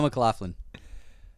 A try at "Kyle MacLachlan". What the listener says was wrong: Yeah, Kyle MacLachlan. No, but you said McLaughlin. It's McLachlan.